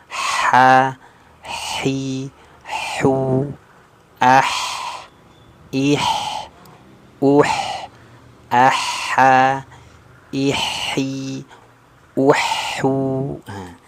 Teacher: Jadi lidahnya terhampar nih, tipis, istifal. Maka dia ketika huruf itu istifal ya, lidahnya turun, pasti juga dia termasuk sifat al-infitah, terhampar lidahnya.